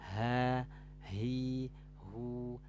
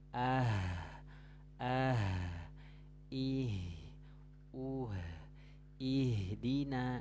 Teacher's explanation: jadi menguarkan huruf ha itu aliran suaranya itu e berhenti seiring berhentinya nafas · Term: sifat Hames